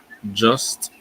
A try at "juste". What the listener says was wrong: Is juste, not just. Just is like English, isn't it? Juste. Okay, so here again, you have a U. The U in French is U, so it has to be as close to the U as possible. You can't say just, otherwise you're into the English sound system.